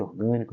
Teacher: é a anti penúltima sílaba que é a sílaba forte